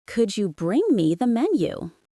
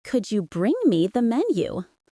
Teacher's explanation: Notice the rising intonation on menu.